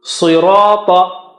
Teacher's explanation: Ta is also very thick and high.